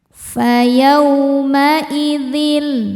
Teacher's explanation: yau ada harfulin sebab ada waw sukun sebelumnya berharokat fathah. Cara bacanya dilembutkan atau dilunakan.